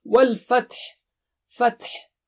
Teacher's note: تا کا ہمس اور ہا کی آواز صاف ہونی چاہیے